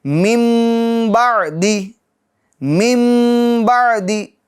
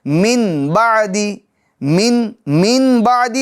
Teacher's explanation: تو اب کیا کریں گے, جو نون ساکن کی آواز ہے یعنی من, من, نہ من, من, نون ساکن کی آواز ہے, یہ کس سے بدل جائیں گی, میم سے بدل جائیں گی. اب وہ نون کی آواز نہیں رہے گی بلکہ کیا, میم کی آواز ہوگی.